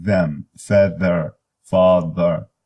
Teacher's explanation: That is a voice, voiced, interdental or voiced, lingua dental, fricative